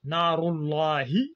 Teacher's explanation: نار الله, le la doit être alourdi.